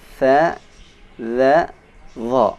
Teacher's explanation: Yang ketiga, ujung lidah menempati posisi sedikit ke bawah, yaitu ujung lidah sedikit dikeluarkan. Ada 3 hurufnya, tha, dha, dha.